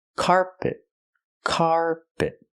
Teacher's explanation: rugs don't cover the entire floor I cannot say carpet carpet I cannot stress both syllables I stress the first syllable